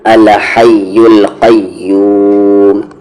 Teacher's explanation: قا کو یا میں قی، یا کے ساتھ واو ہے یو، قیو، اور کھینچتے ہوئے آپ کو میم میں ملا دینا ہے یوم. 4 حرکت کے ایکول کھینچنا ہے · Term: مد عارض